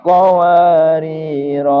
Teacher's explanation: kalau berhenti di qawarir yang pertama, ro fathahnya dibaca panjang satu alif